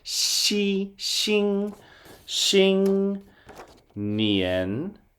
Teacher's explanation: That X is kind of like the SH sound, shh, but use the really frontmost part of your mouth, almost your teeth